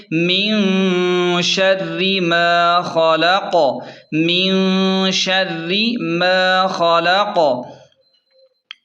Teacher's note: وقف کی صورت میں آخری قاف ساکن ہو جائے گی اور یہاں بھی قلقلہ یعنی جھٹکا ہوگا